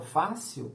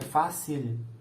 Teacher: quando eu falo fácil, eu estou usando uma semivogal no lugar do L.